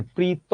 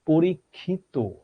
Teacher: যখন এই ত বা ইত এই প্রত্যয়টা শেষে এসে যুক্ত হয় তখন এই অটা অটোমেটিক্যালি ও হয়ে যাচ্ছে